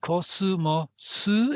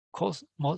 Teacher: It's not kosumosu, it's just kosmos, so it's supposed to end on an S.